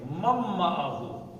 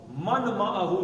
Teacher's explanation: یہ جو شد والے حروف ہیں ان کو پڑھنے کا انداز ہو، مم معہو، اچھا مم معہ، من معہو، یرملون کا قاعدہ ہے ادغام کا، نون ساکن کے بعد میم آ جائے تو نون کے بجائے میم پڑھیں گے، مم معہو، من معہو نہیں پڑھیں گے۔